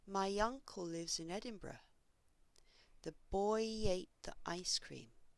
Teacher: We insert a y sound when the vowel at the end of the first word places the highest part of the tongue close to the front of the mouth